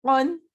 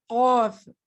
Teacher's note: قاف حلق سے نکلے گا، اس کو کاف نہیں کہنا، اسے کہنا ہے قاف